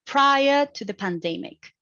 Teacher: it is a rising intonation because it's also a dependent clause and it hasn't end the sentence there so it has a